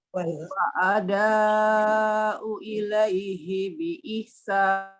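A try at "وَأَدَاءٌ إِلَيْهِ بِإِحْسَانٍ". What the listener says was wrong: Wa ada'un. Wa ada'un itu ya domatain. Wa ada'un ilaihi bi ihsan.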